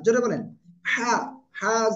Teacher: জবর হা গলা চেপে উচ্চারণ করতে হবে